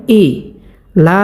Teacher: এ হামজাকে আমরা হরকের শুরু থেকে স্পষ্টভাবে উচ্চারণ করবো।